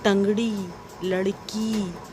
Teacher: ड़ के उच्चारण के समय जीवा मूर्धा को छूकर झटके से बाहर की ओर निकलती है, जैसे टंगड़ी, लड़की आदि। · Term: उच्छिप्त व्यंजन